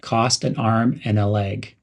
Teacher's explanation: reduce the word and to n